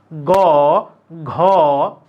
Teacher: গ ঘ এগুলো বলে কাঁপে বেশি স্বরতন্ত্রীটা কাঁপে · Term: ঘোষ